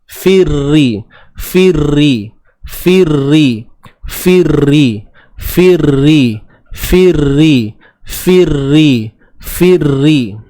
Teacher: Ri 2 harakat man asli, sebelumnya baris bawah. Firri, huruf ra yang bersabdu baris bawah. Tebal ke nipis? Tak maulah tanya, saya jawab terus, jawapannya nipis.